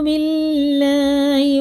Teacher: اللہ کا لام زیر سے تو باریک پڑھیں گے، باللہ پر نہیں کریں گے اس کو، ٹھیک ہے نا۔